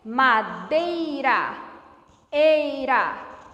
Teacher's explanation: Do E para o I é como se ele caísse. Por isso eu chamo de ditongo decrescente.